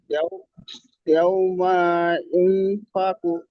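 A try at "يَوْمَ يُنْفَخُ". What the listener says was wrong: হ্যাঁ, মিম টান হয়ে যাচ্ছে। মিম টান হবে না, মিম জবর মা, একদম টান হবে না। ইয়াউমা ইউনফাখু। ইউনফাখু।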